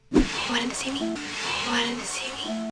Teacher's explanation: The preposition to often reduces to t. But here, because it was preceded by a word ending in D, we drop the T too.